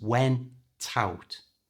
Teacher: For the phrasal verb went out, remember to move the T, the T sound from the end of went, to the front of out, so it becomes went out.